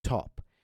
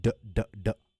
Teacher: a D sound like d d d do instead of top when you say t your vocal cords do not vibrate but when you say d your vocal cords vibrate